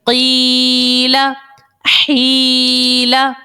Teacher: یہاں پر دونوں میں یا مدہ ہے یا ساکن سے پہلے زیر ہے تو یا مدہ، اسی لیے ہم نے ایک ایک الف کی مقدار ان کو کھینچ کر ادا کیا